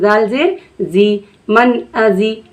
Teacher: ज़ाल कैसे अदा होता है, तो ज़ाल में हमारी ज़ुबान की नोक सामने वाले दांतों से जाकर लगती है। ज़ाल जो हमारा अदा होता है इसमें सामने ज़ुबान की नोक सामने वाले दांतों के किनारे से जाकर लग जाती है और हम नरमी से पढ़ते हैं।